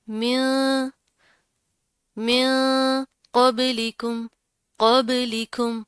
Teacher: इख्वा करेंगे, गुन्ना करेंगे, यानी कि जो नून की आवाज़ है उसको नाक में छुपा कर पढ़ेंगे।